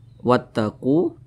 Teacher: huruf q di sini dibaca panjang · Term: Mad thi'i